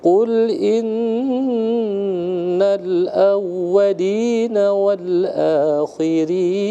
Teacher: nun bertasdidnya digunnahkan karena hukumnya adalah wajibal gunnah atau gunnah musyaddah